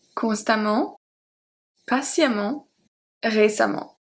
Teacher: So the A and the E are pronounced exactly the same.